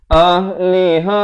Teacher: Jadi kedua-duanya merupakan huruf ha. Makhrajnya di mana? Di pangkal kerongkong.